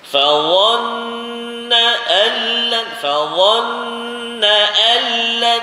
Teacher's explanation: Nun mati bertemu dengan lam idgham. Bila guna jangan dengung, jangan pegang.